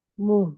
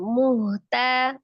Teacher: Adapun ketika kita membaca huruf H itu harus berbeda dengan yang H kecil ya, karena secara makhraj H besar itu dari tenggorokan bagian bawah sama dengan huruf hamzah ya. Kalau kita agak naik ke tengahan maka akan menyerupai huruf H.